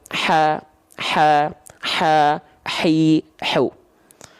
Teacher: ha dari pangkal tenggorokan tepatnya pada bagian pita suara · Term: ha kecil